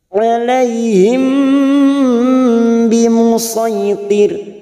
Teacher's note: ada mim sukun bertemu ba, namanya bacaan ikhfa safawi. Biasanya mim sukun kita baca jelas, karena sekarang bertemu ba namanya ikhfa safawi.